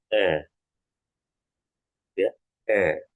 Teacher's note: Nah, kalau A itu jadi mulutnya ya. Mulut kita membentuk seperti saat kita ingin mengucapkan huruf E tetapi kita mengatakan huruf A.